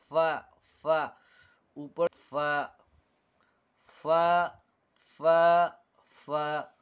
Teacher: ये होंठ से अदा होता है, ऊपर के दांतों का किनारा, नीचे को होंठ का पेट